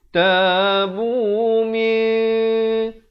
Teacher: Mim itu bibirnya itu sekadar hampir bersentuhan di antara atas dengan bawah begitu saja. · Asalnya mim baris bawah bertemu nun bunyi min. Tapi bila datang ba ditukarkan kepada bunyi mim. Bunyi mim, tetapi mim yang nipis. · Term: hukum iqlab, iqlab